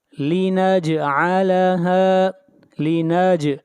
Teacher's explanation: جیم کے اوپر قلقلہ کریں گے